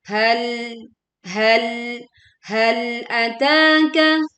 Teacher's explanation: Mulai dari ayat 1 kembali. Hal ataka, tekan lam sukun dengan menahan sebagian suara di ujung lidahnya tanpa memantulkan menjadi hal ataka.